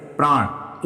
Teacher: र के प्रभाव से न का क्या बन गया, ण बन गया। प्र के साथ आ मिल गया तो प्रा हो गया, संधि दीर्घ संधि की तरह, लेकिन न में क्या आ गया, विकार आ गया पूरी तरह से, प्राण।